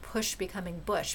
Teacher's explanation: But again, you can also get it from the vowel, which is what we see with push becoming bush, because it can't get it from sh. P becomes ba by picking up voice, but sh is voiceless.